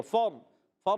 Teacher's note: اور مدنی چینل کے ناظرین، فا کو را سے ملانا ہے، را ساکن سے پہلے زبر آئے، را پر ہو جائے گا